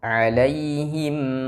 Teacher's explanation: mim sukun ketika bertemu dengan huruf ghain maka dihukumi izhar syafawi mimnya dijelaskan